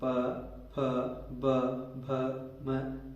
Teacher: ये सभी ओष्ठ की सहायता से अथवा होठों की सहायता से बोले जाते हैं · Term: ओष्ठ्य वर्ण